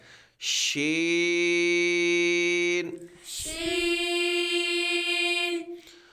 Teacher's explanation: یہ حروف شاجری ہے، زبان کے درمیان اور تالو کے درمیان سے ادا ہوتا ہے